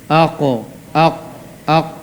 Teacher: Pangkal lidahnya dia yang terangkat. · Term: huruf qaf